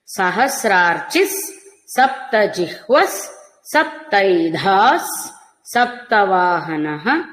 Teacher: అన్ని విసర్గలు కూడా సకారాలే తీసుకుంటాయి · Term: విసర్గ సకారం